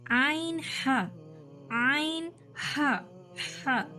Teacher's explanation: तीसरा मखरज हलकी दरमियानी हलक से, आइन हा